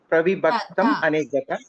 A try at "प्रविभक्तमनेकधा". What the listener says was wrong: Aneka kakara. Ka dha. Ta nasti. Mahaprana dha. Alpaprana dha janate kila. Tadavariti Mahaprana dha.